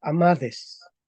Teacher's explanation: vemos que la t se transforma en D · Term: sonorización